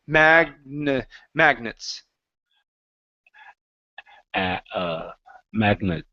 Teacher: we're gonna use a schwah for that e